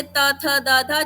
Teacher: फिर दंत जैसे त थ द ध जिसमें मेरी टंग मेरे दांतों के बीच में आ रही है।